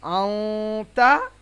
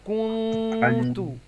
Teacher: তাহলে তানবিন নুন সাকিনের পরে হুরফে ইকফার 15টি অক্ষর, তা সা জিম দাল জাল জা সিন শিন সাদ জাদ তা জা ফা কফ কাফ, এই বর্ণগুলির মধ্য থেকে কোনো একটি বর্ণ যদি আসে তাহলে তানবিন এবং নুন সাকিনকে নাকের মধ্যে লুকিয়ে, ইকফা মানে লুকানো, তাহলে ইকফা করে একালিফ গুন্না সহকারে পড়তে হবে।